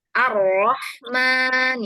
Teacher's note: terangkatnya pangkal lidah ketika mengucapkan huruf ro yang tebal